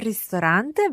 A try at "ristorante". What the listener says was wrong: Ristorante. I think you're thinking about restaurante, no? So, in Italian, ristorante.